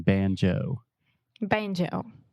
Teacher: we really exaggerate that moving vowel the Oh sound